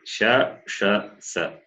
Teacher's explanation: These three sibilants are hard aspirate. They are mahaprana.